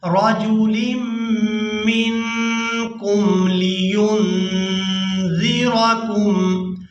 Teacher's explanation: ان دونوں نون ساکن پر ہم آواز کو ناک میں چھپائیں گے، اخفا کریں گے